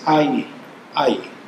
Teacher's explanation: we pronounce it kind of halfway between an i and an a